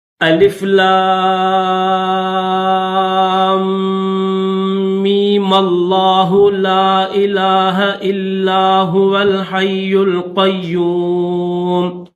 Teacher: لفظ لام کو تو کھینچیں گے لیکن میم کو نہیں کھینچیں گے، بنا کھینچے لفظ اللہ کے ساتھ ملا دیں گے